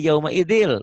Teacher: Yauma idin kan bunyi N. Tuh, ketemu L jadi yauma idil, bunyi N-nya hilang. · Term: idgham